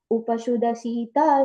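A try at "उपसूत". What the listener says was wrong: And the other correction was in the fourth line, Upasuta. That's a long U that comes there. Upasuta. Upasuta.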